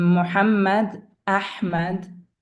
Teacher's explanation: Ha is from the deepest part of the throat. Ha has a special sound, like when losing your voice, the wall of the throat gets tighter and holds the air.